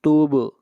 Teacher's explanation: با کے اوپر قلقلہ ہوگا، آواز کو ہلائیں گے اور صاد کو موٹا پڑھیں گے۔